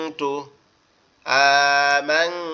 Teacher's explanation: এখানে মিমটাকে বোঝা যাচ্ছে, কিন্তু নুনটা কি হচ্ছে, নুনটা গুন্নার কারণে লুকিয়ে যাচ্ছে, নাকের মধ্যে নিয়ে নাকের বাঁশি দিয়ে পড়তে হবে।